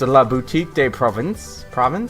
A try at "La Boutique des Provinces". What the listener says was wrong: Provence. You don't say the S.